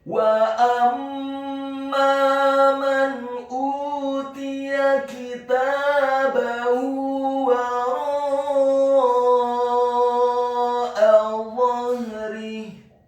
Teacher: huruf dha-nya dibaca tafkhim tebal fathah 1 harokat dengan posisi di bawah kita agak tertutup dan posisi lidah kita di langit-langit atas.